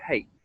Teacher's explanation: And then we'll actually close the mouth a little as we move into the vowel A and the second part of the word, hate. So the mouth's coming down, and that breath, the huh breath, is turning into the vowel sound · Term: H sound